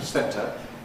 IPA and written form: ˈsentə (centrecenter)